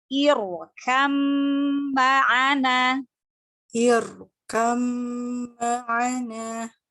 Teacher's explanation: Nah, roknya tebalkan lagi karena rok sukun sebelumnya kasroh karena sebab di sini karena sebabnya hamzah wasol ya. Jadi rok sukunnya dibaca tafkhim, dibaca tebal.